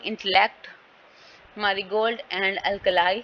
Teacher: The stress is usually placed on the first सेलेबल, तो क्या होगा फिर वर्ड के फर्स्ट सेलेबल पे स्ट्रेस होगा, सेकंड पे नहीं होगा। The last सेलेबल also gets prominence and something इट could be said टू have secondary stress